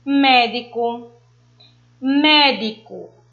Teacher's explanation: A palavra médico, o mé, ele está com mais intensidade, mais força. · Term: proparoxítonas